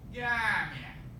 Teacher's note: The sound this letter makes in modern standard Arabic is a J, like in the gym or jeep, except in Egypt. In Egypt, it's a hard G sound